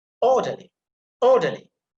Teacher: You see, or that is emphasized because it's a trisyllabic word, and at the end we have the suffix ly.